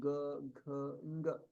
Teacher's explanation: किन्तु ग घ ङ तत्र किञ्चित् संवृत्तत्वं ज्ञायते